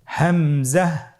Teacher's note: হামজা হরফটি উচ্চারণের ক্ষেত্রেও বারিক করে উচ্চারণ করতে হবে এবং এখানে টেনে পড়া যাবে না দ্রুত পড়তে হবে